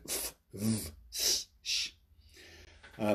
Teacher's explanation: fricatives, where we merely introduce turbulence